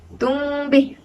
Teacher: Di situ berlaku hukum ikhfa' syafawi yang mana perlu didengungkan dengan kadar 2 harakat.